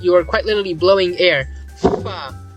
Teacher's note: We have a bilabial consonant, thus we get the bilabial fricative fa, which in Sanskrit is the upadmaniyam. It's like the F, but the F is the labiodental fricative. This is the bilabial fricative.